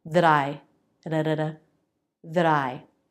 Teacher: If the next word begins with a vowel or diphthong, it's a flap t.